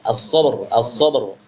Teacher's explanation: Ah itu tafkhim dia, tebal. Karena ra sukun atau disukunkan dengan waqaf, sebelumnya sukun, sebelumnya fathah, tebal.